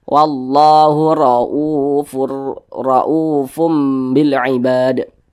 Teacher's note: huruf ro dibaca tebal dibaca tafkhim maka pangkal lidah kita naik terangkat ke atas wallahu roufur rfum Bil Ibad kemudian di sini u dibaca panjang